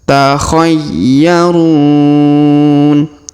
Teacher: huruf ya berharakat tasdid maka kita tahan dan kita tekan